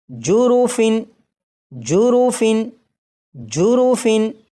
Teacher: تنوین کے نون ساکن کو چھپا کر نہیں پڑھنا بلکہ یہاں پر اسے ظاہر کرنا ہے